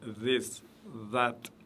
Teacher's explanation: Vous pouvez entendre un D et un Z, le mélange d'un D et d'un Z dans la langue française, un petit peu. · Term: le vel